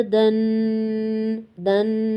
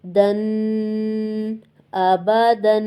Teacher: 1 second کے لیے ناک میں آواز چلی گئی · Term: تنوین